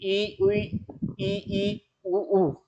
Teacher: मुख में कोई ज्यादा हलचल नहीं होती है, मुख लगभग बंद सा प्रतीत होता है। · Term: संवृत